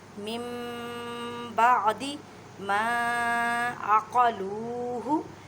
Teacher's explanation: اقلاب کا مطلب ہے بدل دینا۔ اب نون ساکن کی آواز کو آپ نے میم میں بدل کر پڑھنا ہے، من نہیں کہنا۔